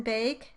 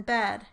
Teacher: Next are the mid front vowels. They are the vowels a, as in bake, and eh, as in bed.